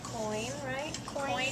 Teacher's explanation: your mouth is gliding from one to the next so you almost hear two sounds